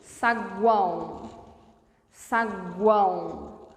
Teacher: Olha como o som sobe e escapa pela cavidade nasal. A boca auxilia sim, mas somente a boca não dá conta. · é possível ter um tritongo nasal, cujo som sai pela cavidade nasal